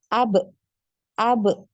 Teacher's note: makhraj dari huruf ba ini adalah di kedua bibir ya. Ada pertemuan di antara bibir atas dan bibir bawah ya.